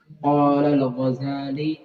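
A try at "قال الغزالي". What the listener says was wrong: panjangin, qala al-Ghazali, ada ya itu.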